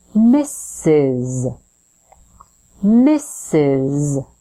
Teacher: is represented by two s letters so we start with Miss that final s is actually representing the sound Z so it buzzes your vocal folds or vocal cords vibrate